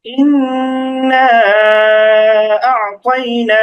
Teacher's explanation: এই মাদ্দের হরফ যেটা ছিল ১ আলিফ, এটাকে ১ আলিফের পরিবর্তে ৩ আলিফ টানতে হবে। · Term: মাদ্দে মুনফাসিল